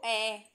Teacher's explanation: मध्य स्वर जीव का मध्य भाग कार्यरत हो।